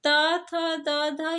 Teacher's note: त थ, द, ध ये जो है दंत से उच्चारित होते हैं। तो दंत व्यंजन है।